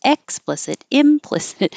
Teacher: I'm using a stress on M to do a contrast